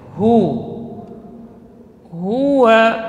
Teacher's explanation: Kenapa monyong kedua bibirnya? Karena dhammah hu, walaupun makhrajnya keluar dari pangkal tenggorokan. Ya, hu, huwa, ya, keluar dari pangkal tenggorokan.